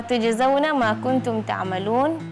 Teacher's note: Tadi tujzauna qalqalah di huruf jim